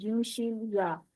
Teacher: ये तीनों हरूफ जुबान के दरमियान को दरमियाने तालु से यानी सख्त तालु से लगाकर अदा करते हैं।